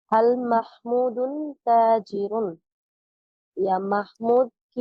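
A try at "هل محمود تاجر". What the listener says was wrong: একটু প্রশ্ন ভঙ্গি দিয়ে হাল মাহমুদুন তাজিরুন একটু ভঙ্গি দিয়ে পড়েন হাল মাহমুদুন তাজিরুন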